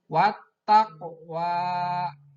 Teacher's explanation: Maka qaf mati harus dibacanya harus memantul. Wat taqwa. Nah, ada pantulan.